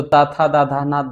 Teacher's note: त वर्ग का मित्रों उच्चारण दांत से होता है